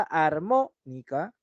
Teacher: en la palabra armónica, como te das cuenta, mo, además que lleva tilde, es la que me está presentando a la sílaba tónica. ¿Por qué? Porque en ella está recayendo la mayor intensidad.